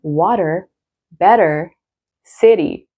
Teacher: it's really American to say water where it's like a fast D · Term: flap